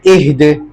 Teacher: وقف میں دال جب ساکن ہوگا تو اس میں قلقلہ کریں گے کیونکہ دال حروف قلقلہ میں سے ہے، اہد۔